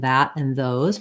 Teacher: straightforward we have a voiced th like in that and those make sure your voice is on tongue between the teeth